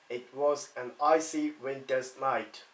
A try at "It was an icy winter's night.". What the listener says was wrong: Now longer with the E in winters.